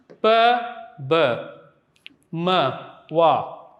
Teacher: So bilabial, we know that two lips come together, meet together to produce the bilabial sounds